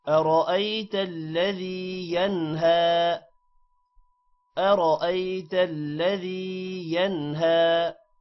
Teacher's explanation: کریں گے تھوڑا سا ینہا کھڑی زبر کو لمبا کریں گے اور ین نون پر غنہ نہیں ہوگا کیونکہ ہا حروف حلقی ہے